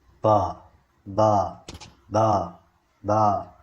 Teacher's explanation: We have to spend more energy while articulating ba, ba, ba, ba. There is a huge vibration in the vocal cords. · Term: voiced speech sounds